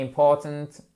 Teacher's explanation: It is important, vous vous souvenez, important, accent tonique sur la deuxième syllabe